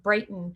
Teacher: we don't say that t sound it actually can sort of sound like a d sound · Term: lazy letters